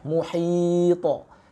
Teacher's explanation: Kita sukunkan belakangnya huruf ta, lalu kita qalqalahkan. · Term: qalqalah kabirah